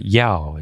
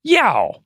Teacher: fourth tone needs to be more forceful. You're not going down enough.